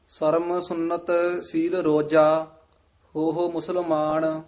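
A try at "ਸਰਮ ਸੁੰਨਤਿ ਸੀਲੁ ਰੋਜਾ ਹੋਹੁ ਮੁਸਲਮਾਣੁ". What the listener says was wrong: ਸਰਮ ਸੁਨਤ ਇੱਥੇ ਠਮਕ ਲੱਗ ਜੇਗੀ। ਸੀਲ ਰੋਜਾ ਸੁਨਤ ਪਦ ਵੀ ਕਸ ਕੇ ਉਚਾਰਨ ਕਰਨਾ ਹੈ। ਰੋਜਾ ਪਦ ਵੀ ਕਸ ਕੇ ਉਚਾਰਨ ਕਰਨਾ ਹੈ। ਇੱਥੇ ਵਿਸਰਾਮ ਹੈ। ਹੋ ਮੁਸਲਮਾਨ। ਹੋ ਨਹੀਂ ਕਹਿ ਦੇਣਾ। ਹਾਹੇ ਹੋੜਾ ਹਾਹੇ ਹੋੜਾ। ਹਾਹੇ ਹੋੜੇ ਨੂੰ ਵਧਾ ਦੇਣਾ ਹੈ। ਹਾਹਾ ਹਾਹੇ ਔਂਕੜ ਹੈ। ਹੋ ਮੁਸਲਮਾਨ।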